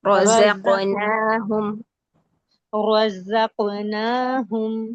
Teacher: जा में buzzing sound है सफीर जहर वाली